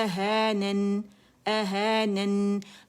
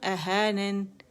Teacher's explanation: نون کی آواز واضح سنائی دینی چاہیے تاکہ یہ آواز غنے کی آواز آپ کی جو ناک کا بانسا ہے وہاں سے آئے